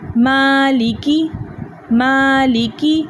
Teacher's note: آپ نے دیکھا کہ میں نے میم کو کھینچا 2 حرکت کی مقدار, اور لکی یعنی لام اور کاف کو میں نے تیزی سے پڑھ لیا